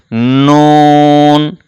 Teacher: জিহবার আগা তার বরাবর উপরে তালুর সঙ্গে লাগিয়ে উচ্চারণ করতে হয় নুন